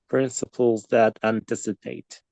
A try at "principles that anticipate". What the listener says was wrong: Yeah, spot on. That's it.